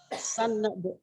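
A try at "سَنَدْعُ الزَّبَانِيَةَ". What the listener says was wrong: Sanad. Sanad biasa aja Bu. Nih Bu, kalau Ibu kan kalau Ibu N-nya jangan banyak. N-nya cuma satu doang. Sanade, sanade, sanade, sanade.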